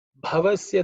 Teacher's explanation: the Bha is aspirated, fourth letter in the Pavarga